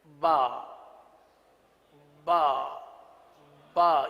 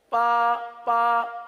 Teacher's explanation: اگر تر حصے سے کے بجائے خشک حصے سے ادا کریں گے تو با کے بجائے پا بن جائے گا